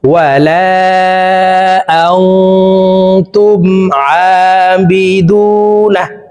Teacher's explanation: এই নুন সাকিনকে নাকের ভিতরে লুকাইয়া গুন্নার সহিত পড়ব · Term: ইকফা গুন্না